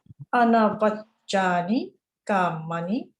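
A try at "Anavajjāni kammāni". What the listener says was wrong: One thing I noticed that to be able to lengthen the long letters, Anavajjani Kamani, you know, Anavajjani Kamani.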